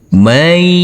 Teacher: Jadi untuk huruf nunnya kita leburkan langsung masuk ke huruf ya yang bertasdid. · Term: idgham bighunah, idgham bi ghunnah